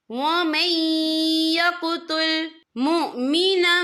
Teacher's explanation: یہاں پر ادغام ہوگا، تو ہم اسے تھوڑا سا غنہ کے ساتھ پڑھیں گے